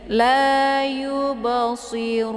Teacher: Ru dibaca panjang karena di sini ada waw sukun sebelumnya berharakat dhammah.